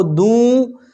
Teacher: دوں کہا نا، یہ ناک میں آواز جا رہی ہے، یہ غنہ ہے